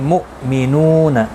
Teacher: हमज़ा साकिन को झटके के साथ अदा करेंगे, मु नहीं करना है।